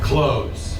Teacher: There's a TH in there, but people usually don't sound it. So if you try to say clothes, it doesn't feel good, so people just say clothes.